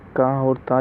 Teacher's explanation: का और ता जो है ये अघोष अल्पप्राण ध्वनि है